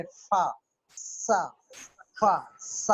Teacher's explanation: जैसे फा, सा, फा, सा, अब बुलाकेज नहीं हुई, फिर क्या हुआ, सिर्फ रगड़ पड़ी, फ्रिक्शन हुई आर्टिकुलेटर की और बाहर निकल गई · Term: फ्रिकेटिव